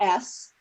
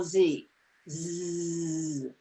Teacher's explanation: those two sounds well z had more air coming through right you should have felt like a vibration with a z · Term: voiced sound